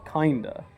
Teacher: So you schwa the E and then the emphasis is on the I, kinder.